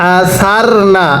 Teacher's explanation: উচ্চারণের সময় জিবাটাকে দাতের আগার সাথে লাগাবেন